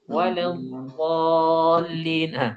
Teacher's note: Aw binunin musyrabatin bilamin mufakhama, atau dengan nun walawwallin. Nun kemudian campur dengan lam yang tebal.